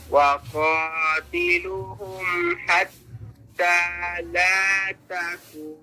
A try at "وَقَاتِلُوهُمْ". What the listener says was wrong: ये क्या कर दिया वक़ातिलू पढ़ दिया है गलती नहीं समझ आई वाओ है लंबा करो वक़ातिलूहुम